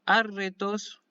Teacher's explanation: La primera de las dos ro es suave, la segunda es fuerte.